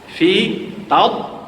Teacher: Dad masuk huruf isti'la, dia tak ada bunyi pantulan qalqalah. Tad tak boleh.